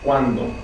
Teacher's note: the nucleus of the syllable is the two vowels